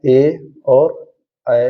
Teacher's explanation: ये कंठ और तालव्य दोनों से बोले जाते हैं, तो ये कंठ और तालव्य स्वर कहलाते हैं।